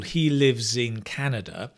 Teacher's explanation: when you connect the z sound is much clearer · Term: connected speech